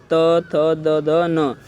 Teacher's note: इन 5 वर्णों को बोलते समय हमारे पास क्या होगा, हमारी जो जीभ होगी वो सिर्फ दांतों से टच होकर एकदम पीछे चली जाएगी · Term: दंत वर्ग